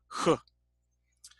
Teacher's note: a category called glottal, which actually is back in the mouth, back in the throat itself, H. And then you have the approximate.